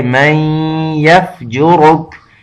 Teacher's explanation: یہاں تھوڑا سا اخفا جیسے یعنی ناک میں آواز کو چھپانے کو کہتے ہیں تو تھوڑی دیر کے لیے جیسے غنہ کا آواز ہوتا ہے · را موٹا ہے اور آگے کاف وہ باریک ہے